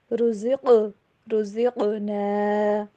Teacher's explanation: رزقنا میں قاف کے اوپر کلکلا ہوگا